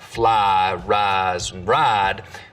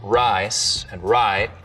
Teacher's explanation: always been what we can describe as full price smoothing where some Southerners smooth the diphthong and words like fly rise and ride but use diphthong and rice and Rye